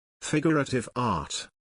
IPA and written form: ˌfɪɡ.ər.ə.tɪv ˈɑːt (Figurative Art)